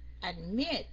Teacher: Rõ ràng mình nhấn ngay chỗ chữ mit